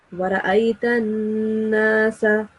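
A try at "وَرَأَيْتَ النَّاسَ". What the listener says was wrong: Try to prolong the noon sound, the noon mushaddad sound a little more.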